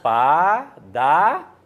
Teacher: Mas a sílaba tônica não é no dá, não é padária, é padaria. Então, aqui no final, nós temos um hiato.